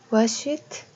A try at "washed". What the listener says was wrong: Like it is like this. If you will read it, it's like this. WASHT. Washed. Not wash it. It should be washed, not wash it.